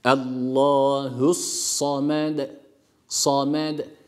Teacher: istila harfidir fetha harekesi aldığı için kalın olarak okuyoruz